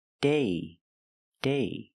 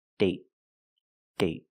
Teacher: So with date, we see the vowel is shorter because you have a stop T at the end.